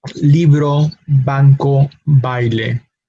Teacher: V and B in Spanish do not differentiate in pronunciation yes there are different letters but there are pronounced the same